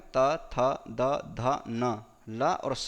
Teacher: तवर्ग में त, थ, द, ध, न, ल और स का उच्चारण स्थान दंत है।